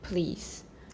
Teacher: approximants after voiceless stop like took will be partially voiceless like please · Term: assimilation